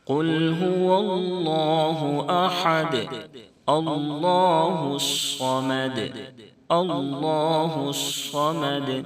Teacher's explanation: صاد کو بھی موٹا پڑھیں گے، اور صاد کو اگر موٹا نہیں کیے تو سین سے بدل جائے گا، اس لیے اس کو پر کرنا بہت ضروری ہے۔ · اللہ کے لام سے پہلے زبر ہے، اس لیے اللہ کے لام کو موٹا پڑھیں گے